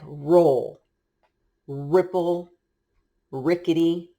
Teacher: We don't make that trill roll sound with our R.